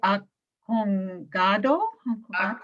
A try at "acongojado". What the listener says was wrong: You left out a syllable. Acongojado.